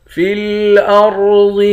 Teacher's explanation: را اور ضاد ان دونوں حرف کو موٹا پڑھیں گے